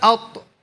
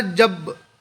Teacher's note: جب ان پر جزم ہو تو ان کو ادا کرتے وقت ان کے مخرج ٹکر کھا کر الگ ہو جاتے ہیں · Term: قلقلہ